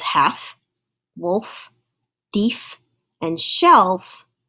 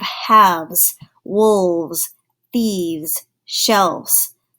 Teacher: If a noun ends in the F sound, the F sound, when you have more than one, such as half, wolf, thief, and shelf, if you think about it, when you're trying to add an S to that, then the shape of your mouth actually changes, so that F sound starts to sound like the letter V. So it actually changes it to a VES.